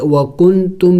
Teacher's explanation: وکنتم، واو زبر و، کاف نون پیش کن، تامیم پیش تم، نون ساکن ہے، اخفا کریں گے، ناک میں آواز چھپائیں گے، یعنی نون کو ظاہر کر کے نہیں پڑھیں گے